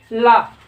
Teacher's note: और क्या होता है कि उस भाग से और इस भाग से, दोनों भागों से, यानी दोनों जीभों के, जब हम ला बोलते हैं तो दोनों बगल से क्या होती है? वो श्वास जो है निकलती है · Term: पार्श्विक